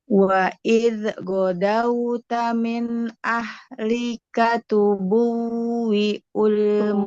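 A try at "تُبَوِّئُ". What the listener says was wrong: Tuba, bukan tubuh. Tubawi ul.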